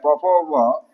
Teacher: यानी पवर्ग का उच्चारण स्थान ओष्ठ से होता है, इसलिए ओष्ठ वर्ण कहेंगे इसको।